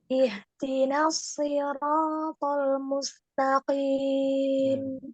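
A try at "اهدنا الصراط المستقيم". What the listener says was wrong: Shotnya masih ya, masih sin.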